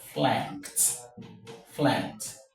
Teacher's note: The sound we have after the ka, the ed is ta and not d.